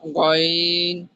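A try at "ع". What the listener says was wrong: আইন, আইন, আইন, আইন গইন নয়, আইন হা, এই দুটো উচ্চারণ করতে হবে।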